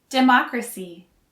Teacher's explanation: stress is on the first syllable for democrat and democratic and the stress is on the second syllable for democracy